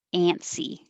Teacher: the way that i would normally say it with my own accent would be very nasally